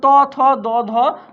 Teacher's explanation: যেগুলো কি ধ্বনি বলতো দন্তধ্বনি, যেগুলো দন্তমূল থেকে উচ্চারিত হয়